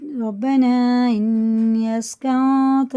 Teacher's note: مد منفصل ہیں دونوں، 4 الف کے برابر کھینچ کے پڑھتے ہیں کیونکہ ان کے بعد الف آ رہا ہے، یہاں پہ بھی یہاں پہ بھی۔